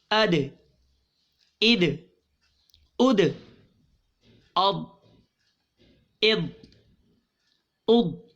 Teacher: اث اث اث اس اس اس اس اس اد جی حروف قلقلہ قلقلہ کتنے ہیں پہلے آپ بتائیے قاف طا با جیم دال ان کا مجموعہ کیا ہے قطب جدن واہ قطب جدن بالکل ٹھیک اب قطب جدن میں دال دال ساکن ہوئی جب بھی یہ ساکن ہوں گے ان کا قلقلہ خوب ظاہر ہوگا